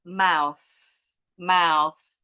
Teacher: Oh, enggak ada getarannya nih. Th-nya berarti unvoice.